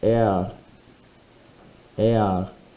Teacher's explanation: So the R sound is much softer when you end the sound as opposed to the English word air, where we have that very lazy R sound at the end.